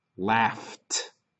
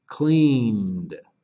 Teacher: If it's a voiceless verb, like laugh, the ED sounds like T, laughed. If it's a voiced sound like clean, the N sound, then the ED sounds like D, cleaned.